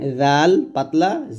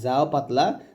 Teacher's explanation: জাল হবে জিহ্বাটা উপরে দাঁতের আগায়, আর যা হবে জিহ্বাটা নিচে দাঁতের মাঝে